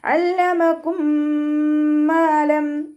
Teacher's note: അയിനിൻ്റെ സൗണ്ടിനെ തൊണ്ടയുടെ മധ്യഭാഗത്ത് തന്നെ കൊണ്ടുവരാം.